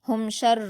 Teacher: میم ساکن کی آواز کو ظاہر کر کے پڑھیں گے بلا غنہ کے۔ ہم شر یہاں پر ہم غنہ نہیں کریں گے یعنی میم ساکن کو جلد پڑھیں گے۔ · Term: اظہار شفوی